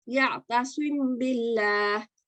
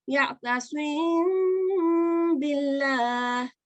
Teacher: Meme sakina as it is, you would have said ya'tasim billah. Now you're going to spot your letter ba, and you're going to prolong the meme sakin for 2 counts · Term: ikhfa